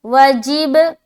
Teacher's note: جیم کو با سے ملاتے ہوئے قلقلہ کریں گے